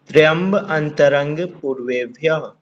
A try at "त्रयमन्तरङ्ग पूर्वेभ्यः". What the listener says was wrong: गलत। अंतरंग अलग बोल दिया आपने, आखिर तो आवाज ही नहीं आएगी। त्रयमंत, हाँ इकट्ठा बोलना। त्रयमंतरं पूर्वेभ्यः।